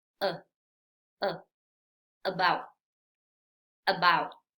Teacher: Vemos la letra A, pero no es about. No, aquí vamos a pronunciar este sonido cortito, recuerda, sin mover nada de la boca, sin abrirla demasiado, simplemente es uh, about, about. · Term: sonido schwa